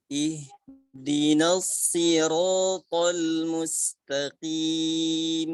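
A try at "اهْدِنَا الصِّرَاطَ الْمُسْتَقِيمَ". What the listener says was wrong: Ayo tebarkan lagi shadnya Ustaz. Ihdinas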